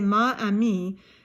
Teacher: if we say ma Ami it's a guttural stop and it just doesn't sound nice and it breaks up the flow